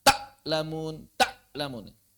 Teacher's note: memotong suaranya saat sukun maksudnya jadi syidah